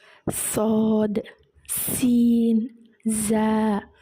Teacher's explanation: இந்த மூன்று எழுத்துக்கள் நம்ம உச்சரிக்கும் போது விசில் சத்தம் வந்து வெளியாகும் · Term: அசபீர்